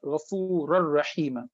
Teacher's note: You cannot find any noon, neither the physical noon nor its attribute, which is nasalization. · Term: idgham without gunna